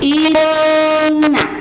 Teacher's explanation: ketika kita membaca huruf yang ada nun bertasydid atau mim bertasydid, maka itu keluar dari rongga hidung. Dan cara pembacaannya Ustazah ini akan menekankan, akan senantiasa menginformasikan kepada kalian agar ditahan 2 harokat bacaannya.